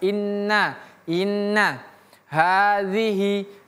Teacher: Nun ini tasdid. Ingat ditahan baru lepas.